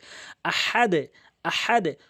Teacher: এখানে দাল রয়েছে, নিচের দিকে ধাক্কা হবে। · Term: কলকল